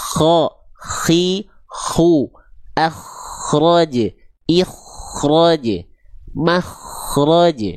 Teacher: kho itu tinggal melafazkan ghin tapi pakai nafas